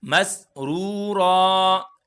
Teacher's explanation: اب یہاں پر تو الف پڑا ہوا ہے، اگر الف نہ بھی پڑا ہو تو ایک زبر کو ہم الف سے بدل کر پڑھیں گے، تو کھینچ کر پڑھیں گے وقف کی صورت میں۔ اب یہاں پر ہم مسرورن نہیں کریں گے، مسرورا اس طرح پڑھیں گے، نہیں ہم پڑھیں گے مسرور، مسرور بھی نہیں پڑھیں گے۔